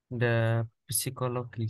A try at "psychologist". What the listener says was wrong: Yes, psychologist. P-nya nggak dibaca. psychologist. psychologist, this one is the subject.